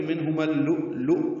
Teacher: حمزہ ساکن دونوں جھٹکے سے پڑھے جائیں گے، لیکن ہم نے آگے اکٹھا پڑھنا ہے تو منہما اللؤ یہ حمزہ ساکن جھٹکے سے ادا ہوگا، ادغام شمسی ہوگا میم کو جب لام سے ملانا ہے، بیچ میں الف لام نہیں پڑھنا، لام مشدد پڑھنا ہے.